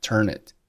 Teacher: turn▁和▁it▁辅元连读，读成了▁turn▁it